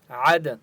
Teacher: عین کی آواز حلق سے نکالیں گے اور دال کے اوپر قلقلہ ہوگا